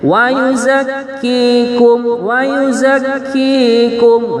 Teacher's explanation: kafnya bertasydid, kemudian setelah kaf ada ya, itu panjang ya.